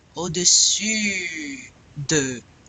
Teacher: It's very important that you get this the U. Remember, you say the E, and then you round your lips like you're going to say O, but you're going to say E